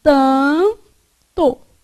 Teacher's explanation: Na palavra tanto, esse A é pronunciado com som nasal, não é? Então, esse N que está aqui, ele, na verdade, só serve para nasalizar o A.